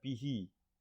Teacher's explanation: bihi di sini ada hi yang dibaca panjang, maka disebut mad silah